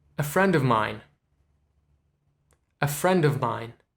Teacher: it's very subtle but it is that v is not there